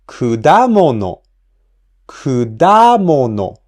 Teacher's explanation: Kudamono has the accent on the second mora, da. So we pronounce the second mora at a higher pitch.